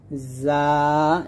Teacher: জিহ্বার আগা নিচের দুই দাতের মাঝে লাগিয়ে উচ্চারণ করতে হবে। যা উচ্চারণ করার সময় জাল এবং জর মত হবে না অথবা জিমের মত হবে না।